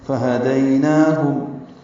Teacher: اس میں 2 ہا ہیں، اقصی حلق سے نکالیں گے دونوں کو